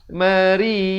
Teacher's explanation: Mari, ri di sini dibaca nipis. Mari macam tersenyum gitu.